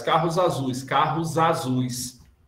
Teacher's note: Porque considera-se como se fosse uma coisa só. E aí mete a regra do S entre duas vogais, pronuncia-se Z.